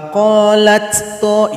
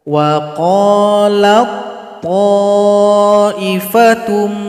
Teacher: Wa qalat to, itu salah. Jadi ta dihilangkan saja karena dia telah masuk kepada huruf to.